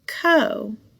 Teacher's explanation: there's no consonant after the vowel and that o says the long o sound i'll call that an open syllable all right so i've got